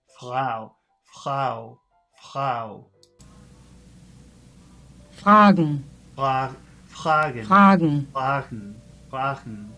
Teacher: Most speakers of German make the pre-vocalic R with a slight friction between the back of the tongue and the soft palate. The region back of the mouth near the uvula.